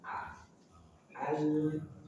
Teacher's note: Dimulai dengan hamzah dari pangkal tenggorokan